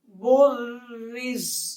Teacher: بارا پیش برا زیری، بری، ز زبر ز، بریز، بریز، وقف، بریز۔ جب وقف کریں گے تو زا جو ہے وہ ساکن ہو جائے گی